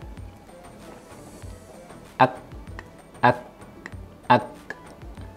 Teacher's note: Huruf kaf tempat keluarnya berada di aqsal lisan yang kemudian ditempelkan ke langit-langit yang antara bagian keras dan lunak. Ya. Jadi, pangkal lidah kita yakni bagian lidah yang paling jauh dari bibir. · Yang pertama sifatnya adalah al-hams, yakni mengalirnya nafas.